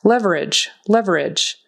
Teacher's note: That final G is kind of like a J and the E is silent.